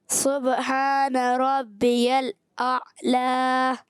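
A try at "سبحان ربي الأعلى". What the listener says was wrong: اعلی، عین کی ادائیگی کلیئر کرنی ہے، سبحان ربی الاعلی،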